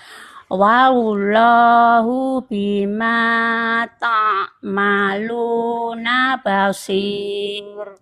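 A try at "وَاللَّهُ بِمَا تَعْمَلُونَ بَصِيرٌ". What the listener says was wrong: Wallah. Ujung lidahnya diletakkan datar aja, Bu. Ujung lidahnya jangan nekuk gini ya. Jangan nekuk gini. Kalau nekuk itu nanti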